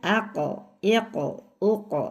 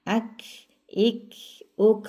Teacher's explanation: Jadi bedanya kalau qof ini enggak ada hembusan nafasnya. Kalau ini ada hembusan nafasnya sedikit ya.